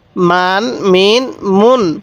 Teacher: আমি প্রত্যেকটারই শব্দের শেষে দন্তন্য উচ্চারণ করতেছি